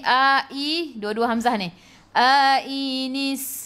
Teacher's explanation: sin ada sukun dan bunyikan s. Kenapa? Sebab sifat huruf sin safir.